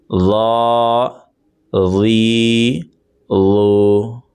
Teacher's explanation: آپ زبان کی نوک کو جو سامنے والے دانت ہیں اوپر کے، ان دانتوں کے تھوڑا سا پیچھے آپ لگائیں گے